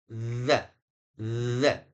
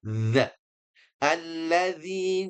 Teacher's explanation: Kuncinya sudah sering kita ulang. Yaitu pertemuan ujung lidah dengan ujung gigi seri atas atau digigit ya. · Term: harfu dza